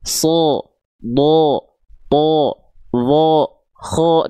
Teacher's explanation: Nah, ketika fathah mereka terdengar seperti vokal O. Tandanya mereka huruf yang tebal. · kalau dia termasuk ke dalam huruf yang tebal itu, dia berharokat fathah akan terdengar seperti vokal O.